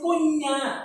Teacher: আমরা বলছি কন্যা, মাঝে একটা ই আসছে